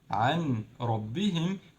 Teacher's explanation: If we have ra or lam, we skip the noon only and we mix between the words without doing Ghunnah. This means there is no time in between of them. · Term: idgham without Ghunnah